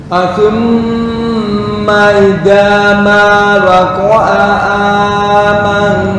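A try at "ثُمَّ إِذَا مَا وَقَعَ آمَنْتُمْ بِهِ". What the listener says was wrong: kepanjangan kepanjangan. Sebentar, idza masih lembas.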